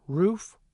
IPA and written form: ɹuf (roof)